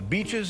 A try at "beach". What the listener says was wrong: Beach should have a long sound. it's a long sound, it's beach. But if it's a short sound, it sounds like bitch.